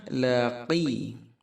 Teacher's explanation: Laqiya laqi huruf qaf dalam sekali, kemudian ya 2 harakat